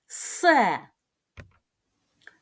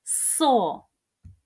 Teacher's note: він не простий звук його називають свистячим